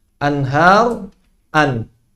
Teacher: Membaca huruf dengan idhar artinya sama dengan membaca huruf hijaiyah ketika sendirian. Jadi mengucapkan anhar sama dengan ketika mengucapkan an. Nunnya itu sama, tidak berubah.